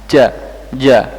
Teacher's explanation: sifatnya sifatnya huruf Jim sifatnya adalah jahr jelas jahr jelas bersuara mengucapkan huruf Jim pita suara bergetar dan udara tertahan